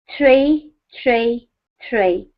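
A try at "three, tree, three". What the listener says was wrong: this is a problem for you as well. So, let's do what we did before. Firstly, just practice the th sound.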